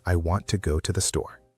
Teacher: the stressed words are want, go, and store. Those are the important words, the words you really need to hear. · Those are the important words, the words you really need to hear. And the unstressed words are I, to, and the. Those are softer.